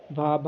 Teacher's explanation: आपका स्पर्श घोष है, महाप्राण है, औष्ठ्य व्यंजन ध्वनि है